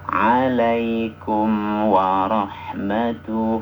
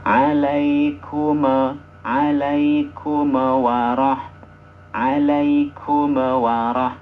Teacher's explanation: ketika membaca mim sukun itu harus ada dengungnya hanya saja tidak di ditahan sampai dua harakat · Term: izhar